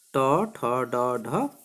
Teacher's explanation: इन वर्णों के उच्चारण करते समय हमारी जीभ मुड़ जाती है, इसलिए इसे क्या कहते हैं, मूर्धन्य वर्ण कहती हैं।